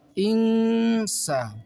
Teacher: membaca nun sukun yang berhadapan dengan sin, maka di sini dibaca ikhfa, maka baca dengan baca samar